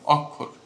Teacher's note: আমি ক যোগ মূর্ধন্য ষ উচ্চারণ না করে ক এবং খ উচ্চারণ করছি। তার মানে উচ্চারণ ভিন্ন, কিন্তু যখন আমি লিখছি সেই লেখাটা ভিন্ন।